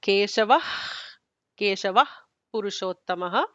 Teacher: at the end of Purushottama, we will say Purushottamaha with the Visarga